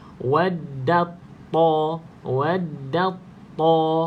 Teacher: Itu kita masuk, idgham tu maksudnya masuk, kamil maksudnya secara keseluruhan ataupun sempurna. Kita masuk secara sempurna ke dalam huruf ta. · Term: idgham kamil